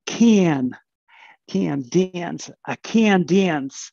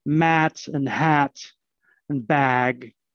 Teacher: But then in other contexts, when there's not an N following, you get mat and hat and bag. So there's a difference in Canadian English between the prenasal trap and bath and the non-prenasal trap and bath.